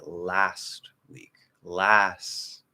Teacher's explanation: I could say last week, last, and maybe do like a weak T there.